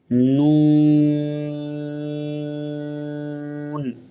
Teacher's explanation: नून में दोनों होठ गोल होंगे और यह भी खींचेगा